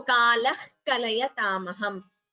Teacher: So a visarga followed by ka. It is jihvamuliya.